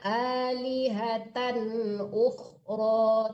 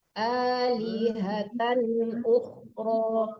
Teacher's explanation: Alihatan ukhro tidak ada dengung di situ ya.